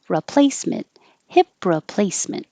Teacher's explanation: You don't say re because the re is not stressed, so it changes to ra.